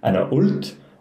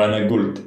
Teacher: Levantine dialects, the qaf is either pronounced as a glottal stop or a ga